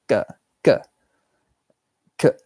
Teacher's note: I think it's got to be an unaspirated k sound. So it can be k. It's more like k, k, k. Like not like so much air